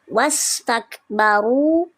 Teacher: ada huruf ro berharakat dammah namanya ro tafhim. Dia dibaca tebal. Lalu ada wau sukun maka dibaca panjang dua harakat. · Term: waw sukun